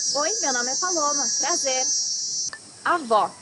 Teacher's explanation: need to hear the sound of the last o in the syllable it should be an open o